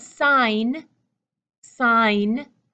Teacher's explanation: the G is gone the G is deleted